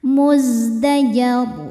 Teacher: zin punya sifat shofir ya, berdesis kayak lebah